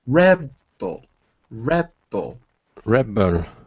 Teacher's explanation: it's the first syllable that's stressed